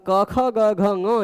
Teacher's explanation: पर क, ख, ग, घ, ग ये पांच वर्ण ऐसे हैं जिनका आभ्यंतर प्रयत्न स्पष्ट है और उच्चारण स्थान कंठ है। यानी ये पांचों वर्ण एक दूसरे के सवर्ण है।